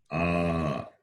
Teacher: is ah two units of time therefore it is long verbal the same is stretched for two units of time